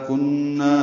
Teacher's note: کننا نون مشدد پہ غنہ